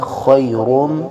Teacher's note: آیت نمبر 3 میں وہی لفظ ہے لیلۃ القدری، قدری، لیلۃ القدری خیر من، خا کو موٹا پڑھیں گے، حروف حلقیہ میں سے ہے اور ابتدائی حلق سے ادا ہوتا ہے غین اور خا، لیکن خا میں خراش کی آواز پیدا ہوگی